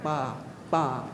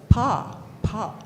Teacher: pa in most of the Inupiaq dialects is very soft. You barely put your lips together, ba, ba. But with the line over it, he wants to emphasize that some words are said with the hard sound, pa, pa.